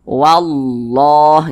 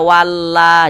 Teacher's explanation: sebelumnya ada huruf yang yang memiliki tanda baca fathah nih maka lafaz Allahnya itu dibaca tebal dibaca takhim sehingga ini dibaca wallah Jangan dibaca walla jangan tapi ditebalkan wallah